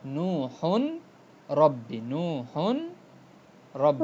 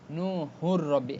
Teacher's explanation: এখানে ছিল নূহুন রব্বি, নূহুন রব্বি, রব্বি শব্দটা এমন ছিল না, রব্বি তানবিনের তো একটা উচ্চারণ আছে, জি যেমন কি বলে হা দুই পেশ হুন, হুন তো এখানে নু হুন হচ্ছে না, কি বলতেছি নু হুর রব্বি, একটা পেশের উচ্চারণ আসছে, তাহলে তানবিনটা মার্জ হয়ে যাচ্ছে, কি হচ্ছে র আসার কারণে এটা মার্জ বানান হয়ে যাচ্ছে, এবং এটাও গুন্না ছাড়া পড়ছে, ওকে জি ওকে নু হুর রব্বি। · নূহুর নূহুর রব্বি রব্বি দেখছেন এখানে তানবিনের পরে র আসছে, তানবিনের পরে, র তো র এটা কি ঈদগাম উইদাউট গুন্না, ঈদগাম বেগুন্না, গুন্না ছাড়া ঈদগাম হচ্ছে, অর্থাৎ একটা একটার ভিতর মার্জ হয়ে যাচ্ছে